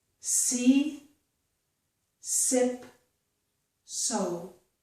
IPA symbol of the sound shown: s